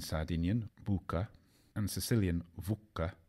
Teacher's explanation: the short u of latin has remained unchanged in sardinian bucca and sicilian vuca but become a short o in italian and the long u